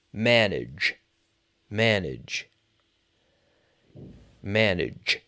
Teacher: that G is almost like a ch manage, but it's voiced